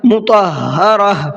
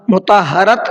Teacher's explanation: اب دیکھیے یہاں پر ہم نے جو وقف کیا ہے گول تا پر کیا ہے. گول تا پر جب وقف کرتے ہیں تو گول تا کو ہا بنا دیتے ہیں. میں نے کیا پڑھا ہے, مطہرہ, مطہرت نہیں پڑھا ہے نا, اس چیز کا دھیان رکھیے.